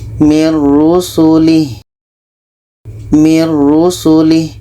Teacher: jadi bunyi nun kita masukkan ke ro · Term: idgham bilaghunnah